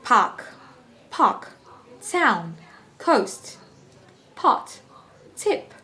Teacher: There is no vibration when you're saying the word park, town, coast, pot, tip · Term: unvoiced